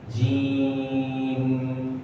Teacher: yang benar itu adalah mimnya itu di munculkan suaranya sehingga tidak hilang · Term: Hunah